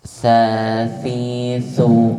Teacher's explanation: Huruf sa, tempat keluarnya ujung lidah yang menempel di gigi seri atas. Ya, sifatnya Aspek udara hamas, aspek suara rokhawah, ya.